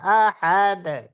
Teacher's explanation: আহাদ, দালের কলকলাটা একটু নিচের দিকে যাবে।